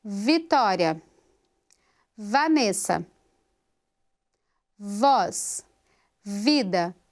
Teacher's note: Agora, quando eu faço Vitória, Vanessa, voz, vida, no ponto articulatório, eu tenho vozeamento, eu tenho som já sendo produzido no início dessa consoante.